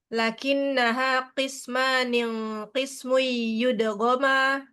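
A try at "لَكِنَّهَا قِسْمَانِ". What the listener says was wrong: Nunnya harakatnya cuma satu. Kasroh, bukan kasrotan.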